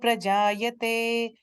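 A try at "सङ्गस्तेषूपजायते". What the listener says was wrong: Pajayate, not pra, it's pa. Pajayate.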